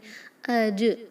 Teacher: من الاجداثی، جیم پر ہوگا قلقلہ، قلقلہ کا حرف ہے تو ضرور اس کی آواز کو پلٹائیں